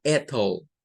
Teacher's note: Por ejemplo, en algunas Y, como las de estas palabras, en donde la Y hace las veces como de una vocal, en estas se gesticulan con schwa. No se va a gesticular como una I, vean, o como una Y propiamente, sino como con schwa. Por ejemplo, esto sonaría a ethyl. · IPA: /ə/